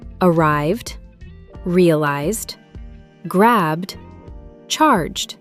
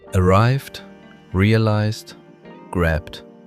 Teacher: You can feel your throat vibrating on the V, Z, and B sounds, so the ending smoothly transitions into a D. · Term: the D sound